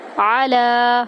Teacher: عین کو وسط حلق سے ادا کریں گے، لام کو ہم 3 سے 5 الف کے برابر لمبا کریں گے۔